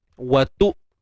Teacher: Matikan hamzah dengan mengekalkan sifat syiddahnya. Suara yang tertahan. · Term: Hamzah yang mati